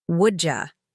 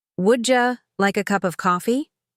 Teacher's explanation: Her voice rose slightly at the end, like a question, while mine stayed flat. Her D in would you sounded like a soft J.